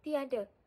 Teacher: apabila kita sebut tiada, seolah-olah kita menambahkan huruf Y di tengah-tengah vokal I dan vokal A